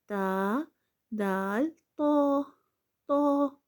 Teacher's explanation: جب زبان کی نوک ثنائے اولیہ کی جڑوں سے لگے تو تا، دال، تو ادا ہوتے ہیں · जब जुबान की नोक सनाय उलिया की जड़ों से लगे तो ता दाल त अदा होते हैं